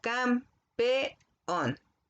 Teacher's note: La E y la O, que están juntas, quedan en sílabas separadas. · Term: hiato